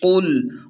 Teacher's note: قاف لام پیش قل، قاف کو خوب موٹا اور پر پڑھیں، باریک یعنی کل نہیں پڑھنا